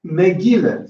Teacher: So the vowel after the stress vowel is schwa.